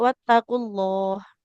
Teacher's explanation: lafaz allahnya dia harus ditebalkan ya nah ditebalkan untuk lamnya karena dia huruf sebelumnya adalah huruf yang berharakat domah